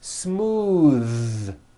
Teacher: Believe it or not, the TH sound in smooth is voiced. · Most foreign speakers say this word incorrectly. They say smooth with an unvoiced TH, but it's voiced.